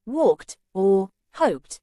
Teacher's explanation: in words like walked or hoped, the ED is pronounced as a T.